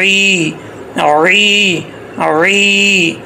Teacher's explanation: عین کو کلیئر کرنا ہے، حمزہ نہیں پڑھنا